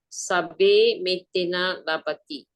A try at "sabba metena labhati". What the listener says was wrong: There's no E, yeah? There is only A. Sabba metena labhati. Why do we normally go back to sabbe? Because sabbe is a very famous phrase in Pali stanzas. Sabba metena labhati.